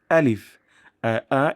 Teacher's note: উচ্চারণের স্থানটি হল মুখের ভিতরের ফাঁকা জায়গা থেকে